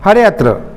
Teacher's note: यहाँ उच्चारण के समय हरे अत्र ही कहा जाता है, अवग्र का उच्चारण नहीं होता, हरे अत्र। ते अपि, इसमें भी अवग्र बन गया, हरे धनव हरे, वृक्षे धनापि वृक्षेपि, जले धन अस्ति जले अस्ति, गोपालो गोपालः धन अहम गोपालो अहम, विष्णु धन अव विष्णु अव।